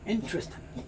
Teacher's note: is interesting casual conversation will probably only make three sounds interesting you may not hear the G sound